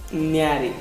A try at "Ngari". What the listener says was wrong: Not nyari. Nga. You have to say first. Nga. You have to freely say nga. Nga. Don't use your tongue. Nga. Nga. Nga. Don't touch your tongue with the palm. You have to say like nga.